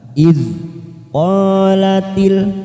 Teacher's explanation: huruf Dal sukun kita tahan jangan sampai memantul karena bukan Qalqalah